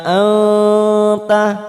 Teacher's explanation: nun sukun bertemu ta, ikfa aqrab, kita samarkan bunyi nun sukun, samarkan 3 ketuk.